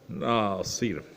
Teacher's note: نون پہ غنہ نہیں کرنا بلکہ بغیر غنہ کا ادا کرنا پڑے گا